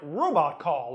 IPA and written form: ɹowbɑt kɑɫ (robot call)